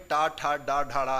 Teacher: टा वर्ग में टा, ठा, डा, ढा, ड़ा है, इसलिए इसे टा वर्ग में रखा गया है, क्योंकि ये मूर्धा से व्यंजन निकलते हैं, इसलिए मूर्धन्य कहते हैं